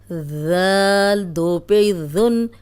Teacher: اب ذال نرم ہے، سیٹی کے بغیر ہے، سامنے کے جو دو دانت ہیں ان کے کنارے پہ زبان رکھیں گے تو سیٹی کی آواز نہیں آئے گی